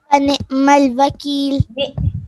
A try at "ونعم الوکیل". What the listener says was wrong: نہیں کریں گے، حمزہ نہیں ہے نا، عین ہے. جی عین کو تھوڑا سا آپ نے کلیئر کرنا ہے، ٹھیک ہے.